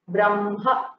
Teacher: We hear the hakara later and the makara first, so the position is interchanged. In pronunciation alone, the spelling remains the same.